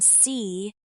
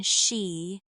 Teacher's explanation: The S sound, like in see, has the tongue close to the top of the mouth without touching. The SH sound, like in she, pushes the tongue slightly further back and lets the air out in a softer way. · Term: S and SH differences